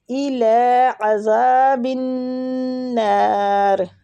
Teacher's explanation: لام پہ کھڑی زبر ہے، اس کو بھی ایک حرکات کھینچیں گے